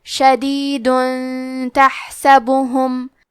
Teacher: پھر حرف التا آتا ہے کلمت تحسبہم. تا حروف الاخفاء میں سے ہے تو ہم یہ حکم کو غنہ کے ساتھ ادا کریں گے